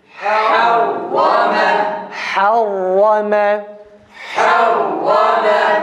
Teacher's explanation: Ha'da hems arkadaşlar. Fethalı harekeli halinde dahi hemse dikkat ediyoruz. Fakat şeddeli ve cezimli halindeki gibi çok mübalağalı değil.